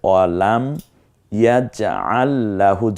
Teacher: জজমের পরে তাসদীদ এসেছে, এই জন্য এই জায়গায় আমরা জজমাল অক্ষর উচ্চারণ করব না